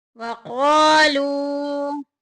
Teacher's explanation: الف مدہ اور واو مدہ ہو رہا ہے، دونوں کو ایک ایک الف کے برابر لمبا کریں گے